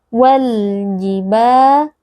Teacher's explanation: Wal, ada alif lam al-qamariyah, yaitu alif lam yang bertemu dengan salah satu huruf qamariyah, yaitu huruf jim. Nah, di sini alif lamnya dibaca dengan izhar atau dengan jelas. wal jibal. Mad tabi'i karena ada alif yang sebelumnya berharakat fathah.